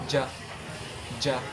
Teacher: ang likurang bahagi ng dila ay dumidikit sa lalamunan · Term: panlalamang, panlalamunan